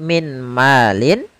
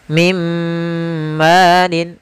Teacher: Nah, kemudian Contoh yang kedua, apabila ada nun sukun atau tanwin bertemu dengan huruf mim, yaitu masukkanlah suara nunnya kepada suara mimnya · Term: idgham bi gunnah